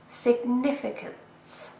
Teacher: And we stress the second syllable.